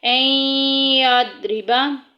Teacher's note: این یضربا، تو یہاں پہ جو ہے ادغام ہو رہا ہے باغنہ، ادغام کا مطلب ہے ملا دینا، مدغم کر دینا، ایک لفظ کو دوسرے لفظ میں ڈال دینا، یعنی کہ ملا دینا اس میں۔ این یضربا، ضاد کو موٹا پڑھیں گے، حروف مستعلیہ میں سے ہے